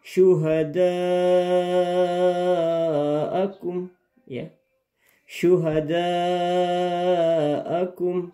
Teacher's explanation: Setiap ada yang seperti ini berarti dia adalah mat wajib muttasil. Dipanjangkan, wajib dipanjangkan 5 harakat.